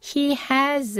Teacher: 여기서는 h가 약화되지도 않고 강하게 읽어 주셔야 돼요